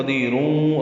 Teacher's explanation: قدیر، اور ملانا ہے تو قدیروں، را پر ہوگی کیونکہ اس پر دو پیشے ہیں، اور تنوین کے بعد واو آنے کی وجہ سے ادغام ہوگا